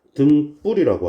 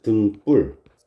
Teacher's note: 뒷소리가 된 소리로 발음이 났습니다. 그러면 이 뒷소리가 된 소리로 발음이 났는데 이거를 지금 된 소리 대기 규칙에 어디에도 적용되지 않고 합성어 등과 불에서 일어난 현상이다.